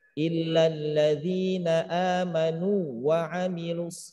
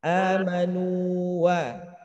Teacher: Jadi jangan sampai terjadinya idgham, maka diperjelas, ditegaskan ada tamkin di situ, nunya panjang, bukan idgham